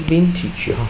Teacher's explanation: vintage 重 音 在 第 一 个 音 节